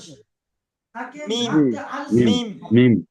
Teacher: দুই ঠোঁটের শুকনো অংশ মিলিত হয়ে উচ্চারিত হয় মিম, দুটো ঠোঁটের।